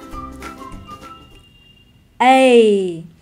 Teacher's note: âm này là nguyên âm đôi bao gồm có hai nguyên âm đơn là E và y chứ không phải chữ A như trong tiếng Việt đâu nhé